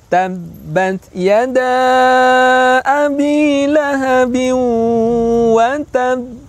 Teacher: menahan dulu suara ba atau pantulan ba, maka dikenal dengan istilah qalqalah akbar